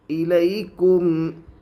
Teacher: یا کے اوپر جزم ہے، جزم والے حرف کو پیچھے والے حرف سے ملا کر پڑھتے ہیں۔ یا ساکن سے پہلے زبر ہے، اس لیے یا لین ہوگی۔ یا لین کو نرم آواز کے ساتھ جلدی پڑھے۔ معروف پڑھے، مجھول آواز سے بچے۔